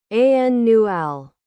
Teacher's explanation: the stress is on the first syllable, annual, and not on the last one like some other adjectives